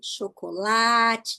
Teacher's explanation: Então, a penúltima sílaba é a sílaba que eu demoro mais para falar, é a sílaba tônica.